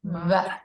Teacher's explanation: It's like Spanish where your two lips come together, no teeth. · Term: Soulatluk V